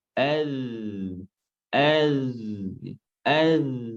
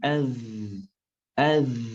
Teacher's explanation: Kalau seandainya diucapkan dengan angin az, maka salah. Karena zal sifatnya jahar bukan hams. Tidak boleh ada aliran angin yang nampak.